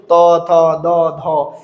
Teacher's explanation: জিহববার আগা দাঁতকে স্পর্শ করে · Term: তবর্গীয়, দন্ত